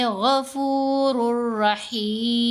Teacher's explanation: रा मुशद्दद के ऊपर और लाम मुशद्दद के ऊपर जब इदगाम होगा तो साथ गुन्ना नहीं किया जाएगा। यहाँ हमने गफ़ूरुर रहीम ये नहीं करना, बल्कि पढ़ेंगे गफ़ूरुर रहीम।